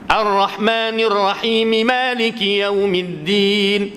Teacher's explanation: Mim yang akhir tu dibaca dengan kasrah pasal sambung.